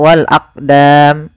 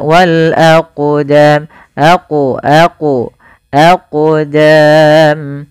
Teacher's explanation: Maka ketika ada huruf qaf atau yang semisalnya, yaitu huruf qalqalah, maka cara membacanya yaitu kita memantulkan huruf qafnya, yaitu kita pantulkan